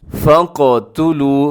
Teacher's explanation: फ़क़तुलू, फ़क़ में क्या होता है, क़ाफ़ को अपने एक तो मोटा पढ़ना है, दूसरा अपने कलकला करना है, इसको हिलाना भी है